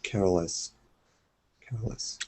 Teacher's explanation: stress on care and not on less